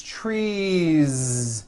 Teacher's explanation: two trees it's not tree trees with an unvoiced S it's trees with that voiced ending